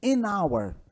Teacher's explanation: O H não é pronunciado